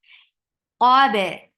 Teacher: Qaf is heavy for fatha upon your jaws. To make qaf heavy, you are lifting the root of your tongue up, and you're keeping your lips straight. Qab. And ba is light.